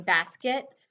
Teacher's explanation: So even in the word basket, you can hear the second syllable in basket. It's unaccented, and so the vowel isn't pronounced as clearly, so we get kind of that short I sound. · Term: schwa sound